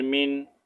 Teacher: نون ساکن کے بعد ہم حروف ہلکی آ رہے ہیں تو ہم یہاں پر اخفا نہیں کریں گے ٹھیک ہے ظاہر کر کے پڑھیں گے اظہار کریں گے